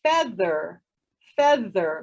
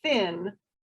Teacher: Can you feel it? Okay, the 2 different sounds for TH then, one voiced, one not voiced